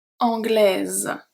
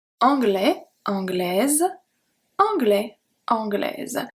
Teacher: Anglais, anglais, anglaise, Z, because the S between two vowels is pronounced as a Z